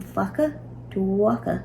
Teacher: So we're going to add BH before faka. The sound that BH makes, w, is going to take over or eclipse the sound of the F, and it'll become the new beginning sound of the word. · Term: eclipsis